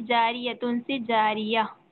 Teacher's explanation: गोल ता पर वक्फ करना हो तो हाय साकिना बन जाती है